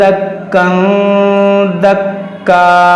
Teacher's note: یہاں پر دیکھیں تنوین کے بعد دال ہے، یہاں پر اخفا ہوگا، اور یہ کاف پر جب وقف کریں گے تو اس کو الف سے بدل دیں گے، دکا دکا، اور ملا کر پڑھیں گے یہاں پر۔